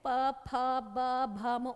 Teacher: प वर्ग की लाइन में वही लिप्स आपके बंद होते हैं · इसमें लिप्स आपके टच होती है आपस में एक दूसरे से